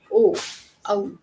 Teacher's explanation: कंठ्योष्ठ है, कंठ्योष्ठ में ओ, औ कि जहाँ पर कंठ है और होठों का भी उपयोग किया जा रहा है।